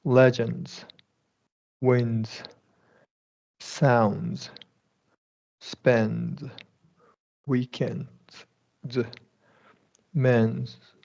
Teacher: DS after N. So you're dropping the D in all these situations. You just have to figure out, it's going to be a Z sound, I think, in all of them.